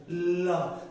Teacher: ল বলতে গেলে জিহ্বাটা সামনে বাধা দিয়েছে, বেড়া করে দিয়েছে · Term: পার্শ্বিক